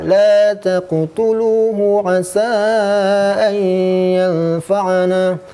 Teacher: Cara membaca lu ini dengan mad tabi'i waw, dibaca dengan panjang 2 harokat.